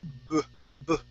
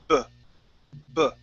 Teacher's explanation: with the B sound, okay, we're also going to create a vibration here, b, b, okay, and our lips come together, b, b, okay, and the sound stops almost immediately.